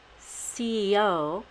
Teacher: You can either say CEO and put a Y between the C and the E, or you can say CEO and only put a Y between the E and the O.